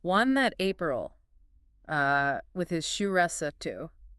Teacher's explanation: suit would have had a very pure ooh sound. Very different from the vowel sound in the modern word suit. · the A in April would have been a long a sound like in the modern word father